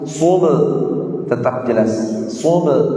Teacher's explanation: ba-nya qalqalahnya tetap dibaca jelas. Tidak boleh jadi kecil atau samar-samar.